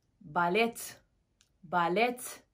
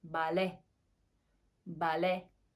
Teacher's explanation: T harfi azizlar talaffuz qilinmaydi